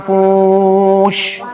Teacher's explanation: نعم المنفوش هنا حكم الإخفاء، لأن النون الساكنة جاء بعدها حرف الفاء، وحرف الفاء من حروف الإخفاء 15.